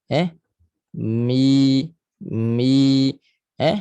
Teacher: Dia keluar daripada rongga kosong, kita panggil al-jawf, rongga mulut. Dia tak boleh naik ke hidung. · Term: mad asli